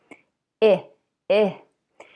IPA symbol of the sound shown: I